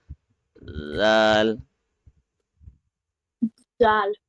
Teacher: You have to very gently touch the tip of the tongue at the upper edge of the edge of the upper teeth.